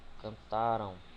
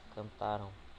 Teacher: a entonação silábica mais forte se dará na penúltima sílaba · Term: paroxítono